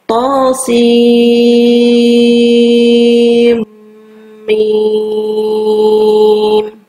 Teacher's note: To-nya kita panjangkan 2 harokat, sementara sin kita baca dengan 6 harokat.